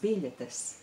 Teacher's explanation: Biļetes sounds very fast, doesn't it? You hardly hear the vowels